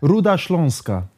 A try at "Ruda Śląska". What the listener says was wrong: You got to roll the R. Ruda